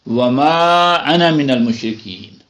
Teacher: انا کا حمزہ پھر آ گیا تو یہ الف کی آواز لمبی ہو گئی